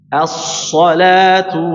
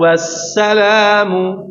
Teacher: As-salat tebal, as-salam tipis.